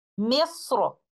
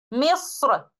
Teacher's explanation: حرف را کو تفخیم یا ترقیق دونوں میں سے کسی بھی طریقے سے پڑھا جا سکتا ہے